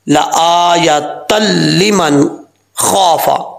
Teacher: تو یہاں پر ادغام ہو رہا ہے لیکن غنے کے بغیر ہو رہا ہے، غنہ نہیں کریں گے۔